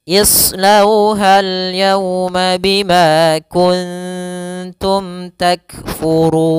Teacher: Nah, kemudian pada lafal run, ro-nya tebal karena dia ro berharokat dhammah. Kemudian pada lafal run ada bacaan mad arid lis sukun, yaitu kita boleh memanjangkan 2 harokat, boleh memanjangkan 4 harokat, dan boleh memanjangkan 6 harokat. Mad arid itu disebabkan karenanya ada sukun ya, sukun arid, sukun yang muncul disebabkan karena dia waqaf.